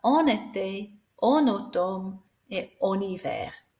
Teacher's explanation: You'll notice that we slide those two together because we've got a consonant, the N, en, and a vowel